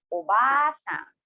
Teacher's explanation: notice how I prolong the a of the obasang as after the ba, a vowel a is written after it, denoting that you should read the obasang longer compared to obasang.